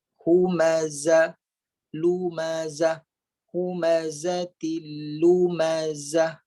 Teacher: Jadi desiran tu akan dengar sedikit ketika kita menyebutkan zai yang berbaris. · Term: bunyi desiran